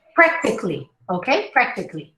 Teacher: You practically don't hear any vowels. except for the first one, prec, because it's a stress syllable